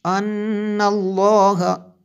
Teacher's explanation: نون مشدد ہے اس لیے غنہ کیا اور لفظ اللہ کو پر پڑھا